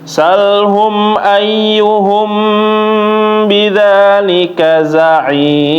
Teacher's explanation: Nun jadi mim Nah kalau misalnya Ikhfa Syafawi dia Mang benar-benar aslinya hurufnya mim ya tapi dia setelahnya bertemu dengan huruf ba maka ditahan juga jangan langsung pindah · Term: Ikfa Syafawi